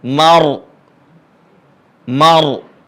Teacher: yang sudah belajar lanjutan ya tajwidnya sudah lumayan perhatikan di sini ada Ro jangan sampai kecolongan rnya tebal bukan tipis